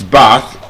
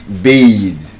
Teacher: As a noun, it has the voiceless th sound. Looking like a tether. As a verb, it's bathe. The voice th. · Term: voiced TH